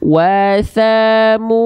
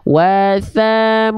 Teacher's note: Nah, mu dua kali ayun dia, dua harokat. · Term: matobi'i